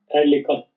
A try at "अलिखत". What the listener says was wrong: अलिखत, ए नहीं अ, बोलिए। हाँ, अलिखत बोलिए।